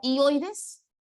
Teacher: hay un triptongo abierta en el centro cerradas a los lados la abierta con la mayor fuerza de voz